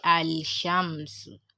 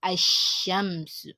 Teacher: you give the alif fatha and then you drop the lam. That means you wouldn't pronounce the lam. Just join the alif to the sound letter directly.